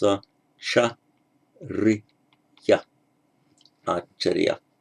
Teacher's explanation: In Pali, the Charya becomes two short syllables, Acharya, Acharya.